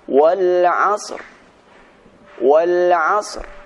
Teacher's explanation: suara sad diberikan suara e dengan samar-samar dan suara ra tetap dibaca dengan sempurna